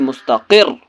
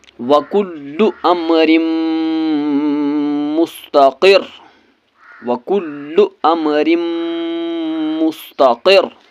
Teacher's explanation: لیے اس را کو اس قاف کے ساتھ ملانا ہے، لیکن اس را پر تشدید ہے، اس لیے اس کو سختی کے ساتھ پڑھنا ہے